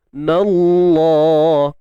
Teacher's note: Kalimah Allah kita baca tebal tebal sebab sebelumnya nun baris atas. Tebal kalimah Allah tu sebab sebelumnya baris atas pada nun tu lah.